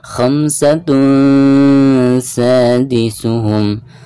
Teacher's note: Khamsatun sadisuhum, tidak dibaca khamsatun sadisuhum ya, melainkan tanwin yang ada di atas ta marbutah tersebut harus disamarkan disertai dengan guna. Jadi bukan suara ang atau ya, melainkan suara guna yang keluarnya dari pangkal hidung.